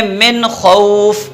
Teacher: اس نون کو مخرج کے اندر چھپانا نہیں ہے، کامل ادا کرنا ہے۔ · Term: اظہار